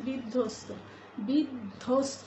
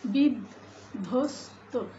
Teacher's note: কিন্তু এই ধটাকে আমরা দুইবার উচ্চারণ করতে পারছি না বলে আমরা এর সঙ্গে একটা অল্পপ্রাণ ধ্বনি যোগ করবো শুরুতে